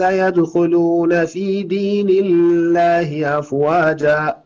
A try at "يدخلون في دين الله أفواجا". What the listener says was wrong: يدخلون في دين لا يعني لا تشدد في الله. يدخلون في دين الله أفواجا، هكذا.